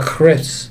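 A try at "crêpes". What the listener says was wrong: I don't know if the French roll their R's like that.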